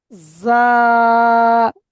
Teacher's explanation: এই জাটা উচ্চারণ হয় জিভের আগা, জিভের আগা এবং উপরের সামনের উপরের দুই দাঁতের আগা এবং নিচের দুই দাঁতের আগার সাথে লেগে জাটা উচ্চারণ হয়।